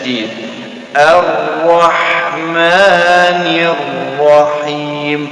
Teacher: langsung kita sebut alif dan masuk ke huruf ra kerana ni lam syiah jadi kita langsung ke huruf ra yang ada tas [تصفيق] arahman